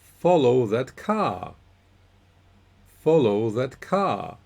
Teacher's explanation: notice how the stress syllable of the focus word in each sentence has a pitch change. This change in melody makes clear which word is important.